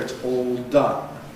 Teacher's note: the [l] is 'Dark', velarized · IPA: [ˈɔːl ˈdʌn]